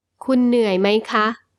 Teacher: the polite particle female speakers ha with a high tone is used when you ask a question